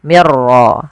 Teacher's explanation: Walafal mir rabbikum, di sini nun sukun bertemu ra, maka kita namakan dengan idgham bila gunnah. Hanya masuk saja nunnya kita masukkan ke ra, dihilang awalnya min rabbikum, karena ketemu ra diganti mir ra langsung.